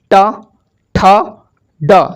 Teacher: जीभ मुड़ करके पीछे जा रही है और मूर्धा को स्पर्श कर रही है।